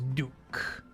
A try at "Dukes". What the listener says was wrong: It's an S on that.